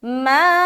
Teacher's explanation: आवाज़ ऊपर की तरफ जा रही है बहुत लंबा, क्योंकि 3 से 4 अलिफ खींचना है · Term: मद